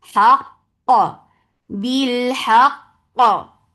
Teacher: First qaf will get sifa of shidda. The second qaf will get qalqala, and this qalqala should be very clear.